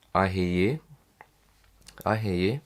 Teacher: so you can use an upward inflection so you've got a rising pitch intonation